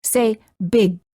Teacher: try another stop the sound G don't say big say big hold the final g Sound by making sure that your tongue remains up in the back of the mouth